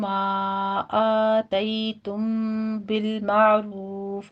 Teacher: قاعدہ اخفا شفیع کریں گے، یہاں بھی 2 کاؤنٹ کرنا ہے، معروف میں را مفخم پڑھتے ہوئے آگے فا پر ہمس کر دیں گے · مد منفصل جائز ہے یہاں پہ 4 کاؤنٹ کر لینا ہے ، آتیتم بالمعروف میں آ میں فتح قائمہ ہے 2 کاؤنٹ